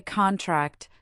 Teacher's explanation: Say contract, the noun, and clap on con. Then say contract, the verb, and clap on tract.